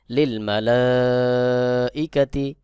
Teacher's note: লিল মালাইকাতি এখানে এক আলিফ মাদ রয়েছে এরপরে হামজাহ চলে আসছে হামজাহ থাকার কারণে এক আলিফ টানের জায়গায় চার আলিফ টান দিতে হবে